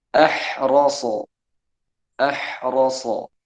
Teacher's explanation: makhrajnya ha itu di tenggorokan bagian tengah. ro tempatnya di mana? Di ujung lidah, sangat jauh sekali tempat. Maka ini dihukumi idgham mutaba'idain.